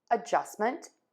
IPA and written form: əˈʤʌstmənt (ADJUSTMENT)